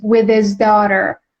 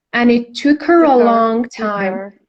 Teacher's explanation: with his daughter you can link these words with his daughter you can drop the h in the word his